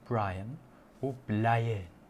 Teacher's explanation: There's no R sound traditionally in the Zulu language, so it becomes an L.